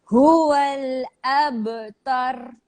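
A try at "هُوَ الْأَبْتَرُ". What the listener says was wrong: Dan ba jangan tebal sangat. Jangan sampai abtar. Jangan sampai abtar. Betul dah tu. tapi jangan sampai abtar.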